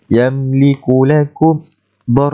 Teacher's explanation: Mim mati bertemu dengan lam. Izhar syafawi, tak perlu dengung.